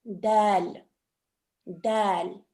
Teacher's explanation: Tongue touches behind your upper teeth.